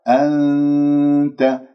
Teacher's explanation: راح أذهب إلى مخرج، إلى حيز مخرج التالي لأنه إخفاء، أنت، لا أذهب باللسان إلى مخرج النون تصير عندي مظهرة ، أنت، أنت خطأ، أنت لامست مخرج النون، هذا خطأ، مخرج